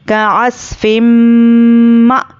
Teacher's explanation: फा पर 2 ज़ेर है, अब यहाँ पे ادغام میم کا قاعدہ آتا ہے تو تنوین کے بعد ادغام میم آیا ہے تو ہم میم کو غنے کے ساتھ پڑھیں گے · حمزہ ساکنہ کو جھٹکے سے پڑھیں گے. کعصفم ما، کاف واو پیش کو، واو پر جزم اور اس کے پہلے پیش واو مدہ، اس کو ایک الف کے برابر کھینچ کر پڑھیں گے.